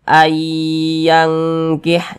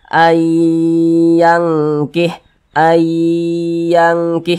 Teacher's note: Nah, yang dimasukkan itu adalah bunyi nun sukunnya ini kita baca ayyangkih, jangan dibaca an, jangan dibaca an yangkih, jangan, tapi huruf nunnya ini langsung dimasukkan ke huruf ya, ayyangkih begitu. Kemudian suaranya itu kita tahan, kita panjangkan sejenak. Nah, karena dia digunnahkan atau didengungkan. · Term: idgham bi gunnah